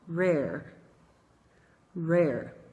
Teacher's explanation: Esse R é chamado retroflexo. E o segredo para você produzir esse R direitinho é dobrar um pouquinho a ponta da língua para trás.